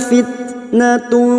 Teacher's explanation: tak sukun yang memiliki sifat siddah dan hamas, maka bunyinya fitnatun